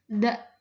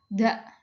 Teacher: da adanya lutupan kecil. Majhur bergetar da. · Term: infijar